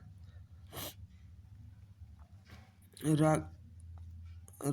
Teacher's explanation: जिस व्यंजन का उच्चारण के समय जीभ की नोक वायु से रगड़ खाकर कांपती है उसे लुंठित व्यंजन कहते हैं